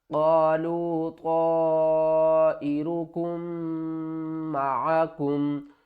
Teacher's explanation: میم مشدد کے اوپر غنہ کریں گے